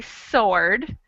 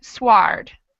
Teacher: In the first word, sword, we don't say the W.